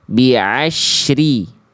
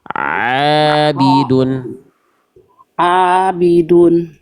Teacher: Nih, ain itu dari tengah tenggorokan